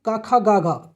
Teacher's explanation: का खा गा घा कंठ से शुरू होता है